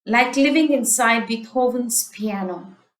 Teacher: Notice again the alliteration of liquid L sound. So the R, the alliteration of R and the alliteration of L, these are very soft liquid sounds, where it emphasizes continuity, the going on.